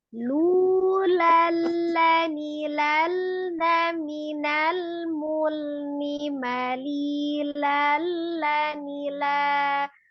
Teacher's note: Ini ujung lidahnya nempel ke gusi atas setiap lam sukunnya. Ya. Tidak ditekan lal, jangan tengah.